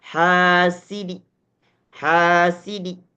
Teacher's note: Jadi yang terdengar dinya terdengar agak lebih kecil daripada harakat sebelumnya. Jadi yang bisa didengar adalah orang yang dekat dengan kita yang membaca Al-Qur'an itu disebut dengan arraum.